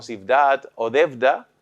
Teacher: Conserva la labial en determinadas palabras como zivdat o devda